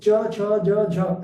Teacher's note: तो जीभ जो है वो जब तालु से टच करती है तो च छ ज झ ऐसे आवाज निकलते हैं। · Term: तालव्य